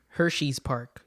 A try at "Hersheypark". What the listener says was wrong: It's Hershey Park, okay? Combined. one word. Hershey Park, not Hershey's Park.